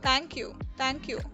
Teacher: the first one it conveys a genuine feeling of gratitude okay it is in the falling tone